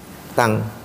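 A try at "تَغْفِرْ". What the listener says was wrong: Bacanya tang bukan tan. Kalau tan idhar, kalau ikhfa.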